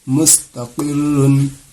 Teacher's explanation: رائے مشددہ کے اوپر دو پیش ہے، چاہے پیش ہو چاہے دو پیش ہو، اس کو پر کر کے پڑھنی ہے۔